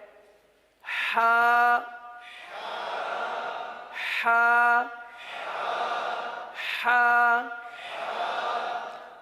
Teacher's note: اب اس حرف کا مخرج کیا ہے؟ حلق کا درمیان، وسط حلق.